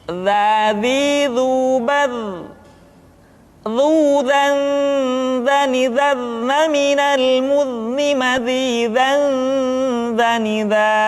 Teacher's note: Selanjutnya huruf za diucapkan dengan menyentuhkan ujung lidah dengan dinding dua gigi seri bagian atas seperti kita mengucapkan huruf tha. Ujung lidah boleh ditampakkan ataupun tidak nampak.